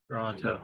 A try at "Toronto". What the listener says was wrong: See, that's how I can tell you're not from that part of the country, because you think there's a T at the end. It's Toronto.